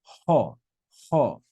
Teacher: it's got a rough breathing Mark above it so we're going to add breath before the vowel sound and say ha very good so it's like ho and